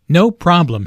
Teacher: Notice the stress on no. The receptionist laughs first, then puts emphasis on no by lengthening the word.